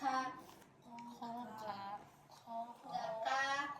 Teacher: Kalau ka ada hamesnya ada nafas keluar.